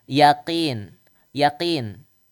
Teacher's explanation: dari lidah pangkal nempel ke langit-langit yang lembek yang lunak